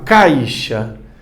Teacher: O A veio forte, o I veio mais fraco. Caixa. Então ele decresce, começa alto e baixa. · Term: ditongo decrescente